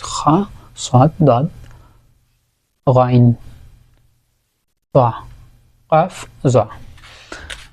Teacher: এগুলোকে আমরা পুরের হরফও বলছি। পুর বা মোটা করে পড়তে হয় এই হরফগুলো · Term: ইস্তিআলা